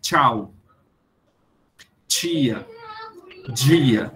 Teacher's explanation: quando você diz tchau, tia, dia, esse som t, ch e d, j são chamados de africados